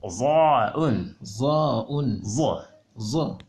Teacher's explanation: Toujours dans la famille des Z, un peu interdentale, mais qui est beaucoup plus profonde. Au fond. Za'un.